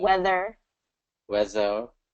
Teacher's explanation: I'm hearing weather with a Z sound instead of the TH.